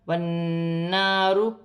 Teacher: نون مشدد میں غنہ کیا جائے گا اور ایک الف کی مقدار کھینچ کے پڑھا جائے گا ، الف مدہ بھی بن رہی ہے، ایک الف کی مقدار